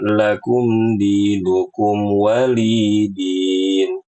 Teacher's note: Li dipanjangkan dua harakat.